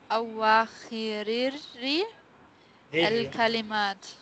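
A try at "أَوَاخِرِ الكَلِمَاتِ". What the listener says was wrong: join ra with la.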